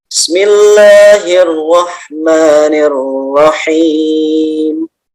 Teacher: Boleh dibaca 2 harokat akhirnya atau 4 atau 6 ya. Kita baca 2 saja yang standar ya.